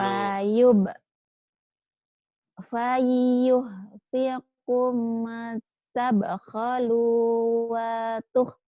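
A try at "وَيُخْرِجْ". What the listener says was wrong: Wayuh, titiknya di bawah. Yang ini di bawah, tadi di atas. Wayukhrij.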